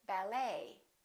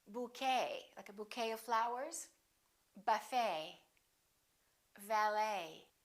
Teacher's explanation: for example the word ballet it has the et ending and in the french language the t is almost always silent so english speakers pronounce it the same way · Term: silent t